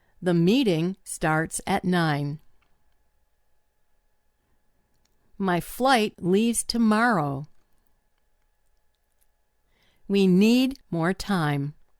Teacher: It's almost like a drum beat. That means the stressed words kind of occur at regular intervals. And that's why English is often described as a stress timed language.